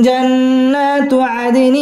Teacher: দাল কলকলার হরফ ধাক্কা দিয়ে পড়তে হবে। আদেনিন ইকফা গুন্না করে পড়তে হবে।